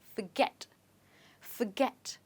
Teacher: the stress in this word is on get